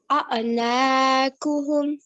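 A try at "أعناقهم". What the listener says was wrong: Again, the ayn should be coming from your throat. Also, the qaf here can be, it should really come from the middle of your throat, okay? A'naquhum.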